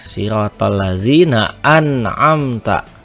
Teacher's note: maka dibaca jelas, tidak ditahan, tidak didengungkan, tidak dimasukkan kepada huruf yang lain ataupun juga tidak ditukar terhadap huruf yang lain. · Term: hukum izhar